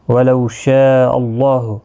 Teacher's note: اللہ کے لام کے پچھلے حرف کے اوپر زبر اس لیے پر پڑھا جائے گا، اس کے اوپر کھڑی زبر بھی ہے، 1 الف کی مقدار کے برابر کھینچ کر بھی پڑھیں گے۔